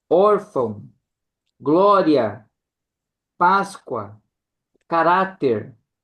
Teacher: é a tônica na penúltima sílaba